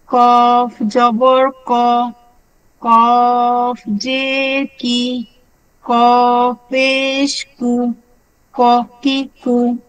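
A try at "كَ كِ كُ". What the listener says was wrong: মাশাআল্লাহ, সুন্দর হয়েছে।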